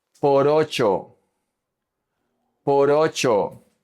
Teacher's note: So this R is going to connect to the O.